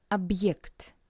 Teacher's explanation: you can hear this little pause between ob and ekt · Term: very short pause